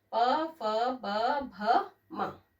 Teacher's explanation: त, थ, द, ध, न। और प, ये दो लिप्स से बनता है, दो लिप्स आपस में जुड़ते हैं, दो होंठ।